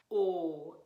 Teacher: o sound and ipa just looks like a lowercase o oh it's a little rounder and darker than we have in english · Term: closed o sound, closed O sound